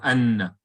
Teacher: Idgham means to merge. Both noons are put together, and then you bring the little W or shadda tashdid sign, and then you join them, and it becomes that heavier.